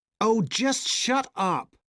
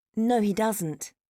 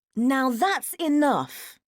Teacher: If someone speaks with a lot of what stressed words, with the intonation going where all the time, they can sound very angry. Strongly stressed words and intonation going down. This makes you sound angry.